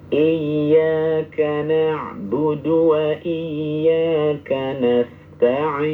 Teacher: Ya, sedikit diangkat pada iya. Ini menurut sebagian ulama dibaca naber. Naber itu mengangkat sedikit suara.